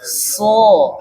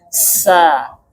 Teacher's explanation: karena pangkal lidahnya turun sehingga suara tipis. Nah, jadi jangan kalau kita tebal jadinya so. · Nah, jadi jangan kalau kita tebal jadinya so. Kalau tipis sa. Nah, karena dia makhrajnya sama kan antara sod, sin dan zai.